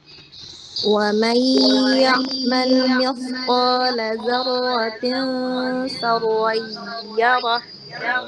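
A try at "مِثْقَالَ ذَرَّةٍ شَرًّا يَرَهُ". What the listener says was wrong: Shinnya ya. Coba diperjelas lagi sya. Dzarratin sya. Ya, jadi desisannya tidak ada. Bahkan dia suaranya menyebar, tersebar di rongga mulut. Karena dia huruf shin punya sifat tafashi. Tafashi itu menyebarnya suara di rongga mulut. Seperti ya kalau mudahnya latihan huruf shin itu seperti ngusir ayam ya.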